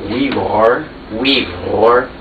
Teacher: It's a voiced trill there. Now that's a uvular trill in the back of the throat.